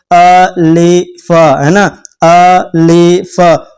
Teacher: मुंह के अंदर के खाली के हिस्से से अदा होता है।